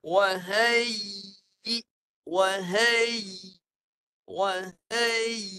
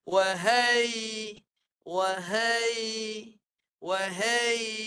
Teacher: Ya yang mati tu perlu dibunyikan dengan jelas. Dengan cara tengah lidah ditinggikan sampai atas. Sampai atas tapi cuma jangan sampai tertahan.